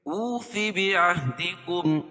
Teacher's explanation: واولين فو ومدة بعهدي اوف مد منفصل کیونکہ حروف مدہ کے بعد حمزہ دوسرے کلمے میں ہو تو مد منفصل ہوتا ہے، اس میں توسط اور قصر ہے، یعنی 2 سے 2.5 الف اس کو کھینچ کے پڑھیں گے